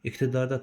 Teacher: İqtidarda t kar samit deyə k səsi gəldi.